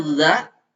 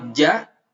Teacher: dza dengan makhraj huruf ja ini bacanya Za lidahnya disimpan di ujung gigi atas kalau Jak tengah-tengah lidah disimpan di tengah-tengah langit-langit